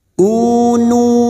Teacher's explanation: Duma diikuti wau sukun Mad thaii dua harakat kita panjangkan